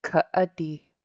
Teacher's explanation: Stop, pause, break. It's a glottal stop. All you do is stop the air. So instead of saying kadi, you would say ka'adi. · It's just like when you say uh-oh, you're stopping the air in the middle.